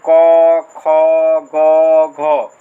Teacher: ये जितने भी वर्ण है उसका उच्चारण स्थान क्या हो जाएगा कंठ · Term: क वर्ग